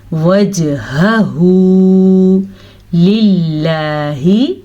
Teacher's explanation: لفظ اللہ سے پہلے زیر آ رہی ہے تو لفظ اللہ کو ہم باریک پڑھیں گے